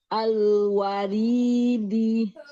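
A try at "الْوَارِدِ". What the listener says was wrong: Al-waridi. Wa monyong lagi. Waridi. Nah, seperti itu ya, lam sukunnya. Jadi dia kasih bainiyah, sedikit dialirkan suaranya. Jadi jangan terputus dengan huruf setelahnya ya. Walaupun nggak terlalu panjang, karena dia bainiyah ya. Nggak panjang, suaranya mengalirnya nggak panjang banget. Tapi dia bukan syiddah, bukan tertahan ya.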